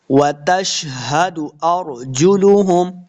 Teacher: شن پہ سیٹی کی آواز کرنی ہے